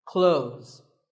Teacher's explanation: Well, first of all, this word is not cloths. When we say clothes, the TH in the middle can often be silent. Clothes. But it's not wrong if you say these letters with a the sound.